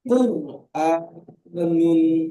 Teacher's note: কপের ওপর পেশ হলে হারাকাতকে টান না দিয়ে তাড়াতাড়ি করতে হবে। র সাকিনের ডান দিকে পেশ এসেছে, এটি র কে পুর করে পড়তে হবে